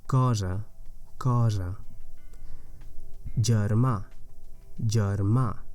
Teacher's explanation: that first e is unstressed so it's neutral vowel